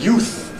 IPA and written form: juːθ (youth)